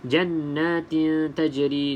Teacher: nun yang bersabdu wajibul gunnah, wajib dengung 2 harakat.